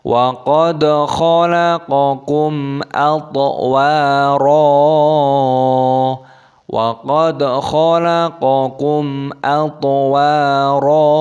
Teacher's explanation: Dalnya sukun dibaca qalqalah dipantulkan suaranya. Wa qad khalaqakum, mim sukun bertemu dengan alif dibaca idhar syafawi, dibaca jelas, tidak boleh didengungkan.